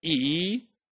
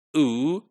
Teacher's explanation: the tip of the tongue is involved and then for pronouncing ooh the back of the tongue is involved